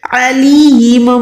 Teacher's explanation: عین حلق کے درمیان سے ادا کریں